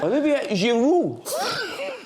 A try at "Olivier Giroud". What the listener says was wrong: No, a bit too much on the R. No need to do r.